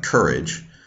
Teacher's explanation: English and British English uh reconverted the pronunciation the phology to conform to English patterns stress on the first syllable